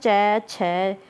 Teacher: यह तालू से बोले जाते हैं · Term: तालव्य